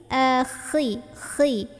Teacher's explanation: Ini khi pangkal lidah kita naik, suaranya agak kotor ya. Suaranya agak kotor, enggak bersih.